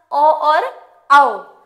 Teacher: इनका उच्चारण कंठ और ओष्ठ दोनों से किया जाता है, इसलिए इनको हम कंठोष्ठ्य कहते हैं